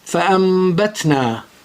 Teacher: the noon is converted into mim with ghunna and it becomes fa'ambatna.